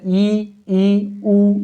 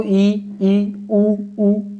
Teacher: संवृत स्वर में मुख द्वारा मुंह सकरा हो जाता है, जैसे ई ऊ मुंह जो है हमारा पतला हो जाता है बोलते हैं जब हम, ऐसे आप बोलकर देखो, ई ऊ दांत हमारे भिज जाते हैं।